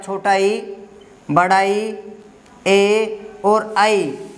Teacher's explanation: ये 4 वर्ण हमारे अग्र स्वर है आपके, जीभ के अगले भाग से बोले जाते हैं